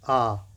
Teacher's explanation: जिनको बोलने पर जो या उच्चारण में मुख गोलाकार नहीं होता। जैसे आ करेंगे तो क्या मुंह गोल हो रहा है? नहीं, मुंह फैल रहा है। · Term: अव्रतमुखी स्वर